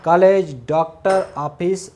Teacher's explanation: आ और ओ के बीच की ध्वनि का प्रयोग किया जाता है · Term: अर्धचंद्र बिंदु